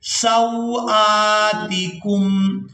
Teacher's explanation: حمزہ کھڑی زبر آ، کھینچ کر ادا کریں گے